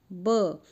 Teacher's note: ब बोलते ही दोनों होंठ आपस में स्पर्श कर रहे हैं, तो अगर नीचे का होंठ काट दिया जाएगा तो ब हमसे नहीं बोला जाएगा। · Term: ओष्ठ्य